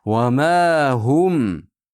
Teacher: Va ma hum mimga lablar bir-biriga tegadi.